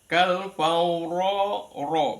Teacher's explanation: ronya ro dibaca tafkhim tebal · lidahnya ditarik ke tengah dari ujung ditarik ke tengah itu ro yang dibaca tafkhim